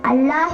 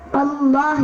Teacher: இதில் அல்லாஹ் என்ற வார்த்தைக்கு முன்னால் உள்ள வாவுக்கு சபர் வந்ததால் இந்த அல்லாஹ்வை வல்லியமாக உச்சரிக்க வேண்டும். அல்லாஹ் என்று சொல்லாமல் அல்லாஹ் என்று ஓத வேண்டும்.